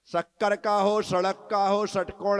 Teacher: जिस बुंदेलखंड में मैं जन्मा, वहां पर तीनों सा एक से बोले जाते हैं।